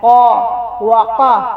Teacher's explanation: قاف کو واضح گلے سے نکالنا ہے